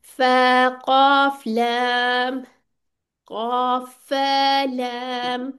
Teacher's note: फा को मोटा नहीं करना, ना लाम को करना है, और ना कॉफ को पतला करना है